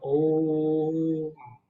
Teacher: जो ओम में ओ है उसका उच्चारण बाकी शब्दों से 3 गुना समय तक होगा, बाकी वर्णों से। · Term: प्लुत